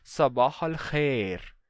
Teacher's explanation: Não khair com ditongo ai, mas um e. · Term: monotongação